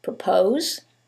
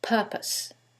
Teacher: in the first one, it's the second syllable that's stressed, and in the second one, it's the first syllable, and that changes the pronunciation completely. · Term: word stress